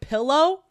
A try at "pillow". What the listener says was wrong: P- pillow? It's an I.